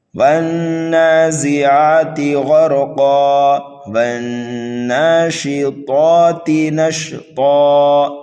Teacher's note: نون مشدد ہے، ہم اس کو غنہ کر کے پڑھیں گے